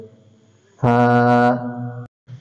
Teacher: নিচের ঠোঁটের পেট সামনের উপরের দুই দাঁতের আগার সাথে লাগাইয়া 1টি হরফ উচ্চারিত হয়